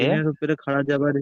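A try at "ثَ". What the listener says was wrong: সিন নয়, সা, সা, সা, সা, তারপরে যে সা আছে না, ওই সা। সা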